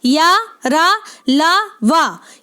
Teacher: अल्प प्राण, ध्यान रखें, क्योंकि या, रा, ला, वा ये चार अर्धस्वर होने के साथ साथ संघर्षहीन व्यंजन होने के साथ साथ अल्प प्राण भी हैं